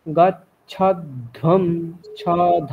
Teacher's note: তাহলে ধকারটাকে মহাপ্রাণ বর্ণ যেহেতু একটু প্রেসার দিয়ে বলতে হবে